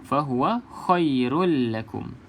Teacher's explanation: Idgham bila gunnah, masuk ke dalam lam tanpa gunnah.